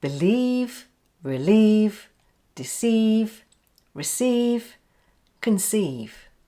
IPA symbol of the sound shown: i: